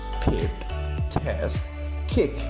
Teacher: Aspiration is a process, is a phonological process, which is exactly about a secondary modification, a puff of air, which is exactly a secondary modification that is superimposed on the primary articulation